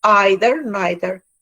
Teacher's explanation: For British English is pronounced as a diphthong, whereas American English is pronounced as a long E